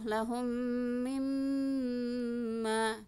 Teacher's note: Jadi tahan hidung 2 ketukan, setelah gunnahnya ada alif di sini jadi panjang. Setelah gunnah ditahan hidung, setelah itu panjang.